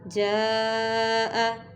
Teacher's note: اب حمزہ اسی کلمہ میں ہے تو یہ مد متصل ہے، اس کو ہم 4 حرکت کے برابر کھینچیں گے